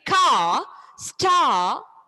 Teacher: whenever the Ra sound is coming towards the end, it's silent. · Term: Ra is silent